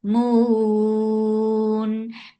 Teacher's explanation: Because of this work, we are giving temporary sukoon here. This temporary sukoon has turned this 2 counts long vowel into 4 counts. This is mad arid lil sukoon, and mad arid lil sukoon can be stretched 2, 4, or 6 counts long.